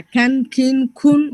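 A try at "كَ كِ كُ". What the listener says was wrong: No, still the hums is coming. So try again.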